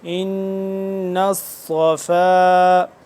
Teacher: نون مشدد اس پہ ہم غنہ کریں گے، صاد کو موٹا کریں گے